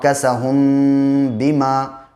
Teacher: ہا میم پیش ہو، میم کے اوپر جزم ہے، جزم والے حرف کو پیچھے سے ملاتے ہیں، اور میم ساکن کے بعد با آیا ہے، اس لیے ناک میں آواز میم کی ٹھہرے گی۔